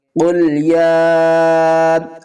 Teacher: قل یا کے اوپر کھڑا زبر بھی ہے اور مد بھی ہے، چھوٹی مد ہے، 3 الف کی مقدار کھینچ کر پڑھیں گے